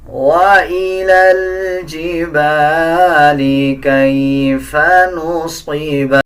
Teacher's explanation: وَإِلَى الْجِبَالِ، اس میں بھی اسلام کو اگلے لام کے ساتھ ملایا جائے گا، الف اور یا کو سکپ کر دیا جائے گا، صاد کو پر یعنی موٹا پڑھا جائے گا